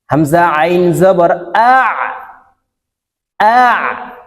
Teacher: আইন হলকের মধ্যখান থেকে উচ্চারণ হবে